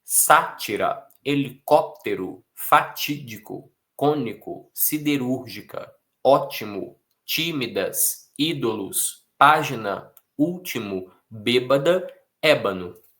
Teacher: São palavras com força na antepenúltima. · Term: Proparoxítonas